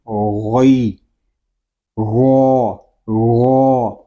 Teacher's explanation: غین یہ حروف مستعلیہ میں سے ہے، اس کو پر پڑھیں گے۔ غین کو جب ادا کریں گے تو حلق کو تھوڑا سا گھمائیں